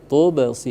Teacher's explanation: itu qolqalah sugro dia jadi diqalqolahkan dipantulkan tapi jangan sampai berhenti cukup e sekali lewat